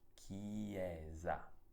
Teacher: con la S che ha un suono debole, ti ricordo, perché si trova tra due vocali, la E e la A.